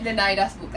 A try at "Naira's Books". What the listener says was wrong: Sin el D. Naira's Books.